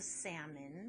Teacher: the l i don't say salman so it's a salmon but i still have that schwa sound at the end